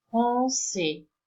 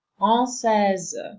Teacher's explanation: But by adding this E, the final S, which wasn't read in masculine, is now read as Z